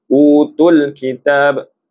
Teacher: ketika kita baca utul kitab tak boleh kita panjangkan walaupun hukumnya dari segi asal adalah mad asli tetap tidak boleh dipanjangkan kerana pertemuan dua huruf sukun.